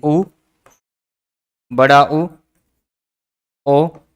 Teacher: ओष्ठों का आकार गोल सा हो जाता है तो वृत्ताकार या फिर वृत्त मुखी स्वर कहलाते हैं।